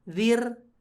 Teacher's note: Ketika anzartahum dengan am lam tunzir zir. Nah, ketika ada ro yang sukun, sebelumnya ada huruf berharakat kasroh, maka umumnya dia dibaca tipis ro-nya, tarkik.